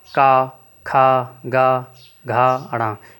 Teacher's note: जिन व्यंजनों की ध्वनि उच्चारण के समय जीभ के पीछे भाग से कोमल तालु स्पर्श होता है उसे कंठ व्यंजन कहते हैं।